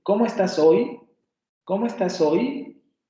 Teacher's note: Ustedes se van a dar cuenta que al final de mi oración la cadencia sube. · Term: entonación va a ser ascendente